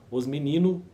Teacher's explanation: o português brasileiro omite a consoante travadora